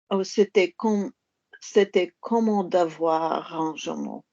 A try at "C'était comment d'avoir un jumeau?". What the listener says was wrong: Don't change vowels. Un jumeau.